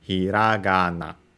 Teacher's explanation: if the first syllable is low, the next one is inevitably high and stays high until a potential pitch fall, which is where we mark the accent of a word, in this case after the ga of hiragana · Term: pitch accent